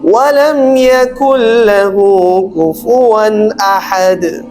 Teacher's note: دو زبر کے بعد ہمارے پاس حمزہ آ رہا ہے تو احد, تو ہمیں بنا غنہ کے بنا اس کے ہمیں پڑھنا چاہیے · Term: اظہار